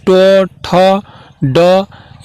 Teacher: ट वर्ग का जितना भी ध्वनि होगा जैसे ट, ठ, ड, ये सब क्या होगा, मूर्धा उच्चारण होगा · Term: मूर्धन्य